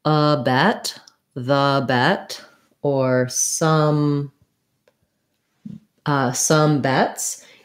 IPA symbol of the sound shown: ɛ